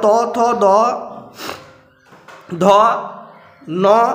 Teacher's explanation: এরপরে দন্তন্য, মানে এগুলো দাঁতে উচ্চারণ হবে। আগেরটা মূর্ধন্য মানে মূর্ধায় জীব স্পর্শ করছিল, এবারে দন্তে। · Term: দন্ত ব্যঞ্জন